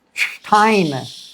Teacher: S t at the beginning of a word always turns the s into a shh sound.